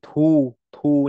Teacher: bằng cách là mình nói âm thờ trong tiếng Việt nhé và mình bật hơi ra